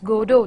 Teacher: It is Godot. Though we have T in the end, but it is silent, we do not pronounce it, so it's Godot that we pronounce.